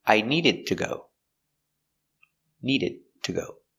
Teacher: a stop d needed we don't say i needed to go we linked the words with a stop d